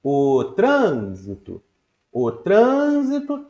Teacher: a sílaba tran, ela ganhou mais força